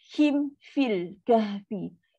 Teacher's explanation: Him tutup mulut betul-betul. Baru pergi huruf fa. Sebab mim dengan fa kan duduk huruf bibir.